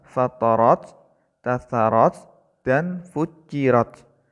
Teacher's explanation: Tak di sini wajib menampakkan sifat hamasnya dengan cara mengeluarkan angin yang sedikit tertahan ketika mengucapkannya.